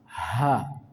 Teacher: dalam membunyikannya ada suara nafas H, ada desisan. Yang kedua dibaca dengan lembut H, H. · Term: huruf H